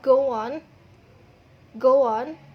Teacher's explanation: Saat kita mengucapkan kata go on, terdapat penambahan suara w.